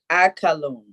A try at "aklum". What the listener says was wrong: No, not aka. No, it's only 2 syllables in the command tense. It's only 2 syllables. Okay, you put the A in front of the K, and you say the A and K together. That's 1 syllable, and then you got it.